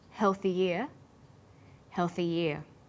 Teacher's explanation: For example, healthy year sounds the same as healthy year. When healthy is linked together with ear, a y sound is added.